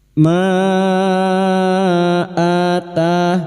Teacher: Annahum radu radu cuma diikuti wau sukun dua harakat mad thabi'i ruma bertemunya mad dengan hamzah di lain kalimat mad jaiz munfasil kita samakan dengan sebelumnya lima harakat kita panjangkan